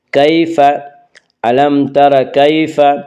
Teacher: علم تر کیف، یالین ہو یا جو ساکن ہو اس سے پہلے زبر ہو، یالین کو نرم آواز کے ساتھ جلدی پڑھیں گے